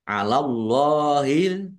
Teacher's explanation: Allahnya dibaca tebal karena harakat di depannya fathah.